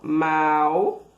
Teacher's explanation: Primeiro vem a vogal na sílaba e depois a semivogal, certo? Para marcar, primeiro, o som com grande intensidade mais forte do A, que é a vogal, e depois da semivogal, o U, que tem um som menos intenso, certo? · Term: ditongo decrescente